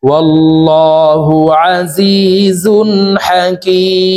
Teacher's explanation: কি 3 আলিফ টেনে মিমকে সাকিন করতে হবে, কারণ মদের হরফের বামের হরফে ওয়াকফ হইলে মুদ্দা আরজি 3 আলিফ টানিয়া পড়িতে হয়।